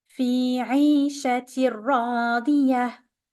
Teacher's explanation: Here we have, for those who are familiar, we have an idgham بغير غنة. We're gonna merge the tanween into the ra.